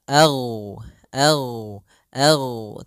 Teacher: rakhawah itu mengalirnya suara sehingga ag ag ag tapi tidak ada nafas kita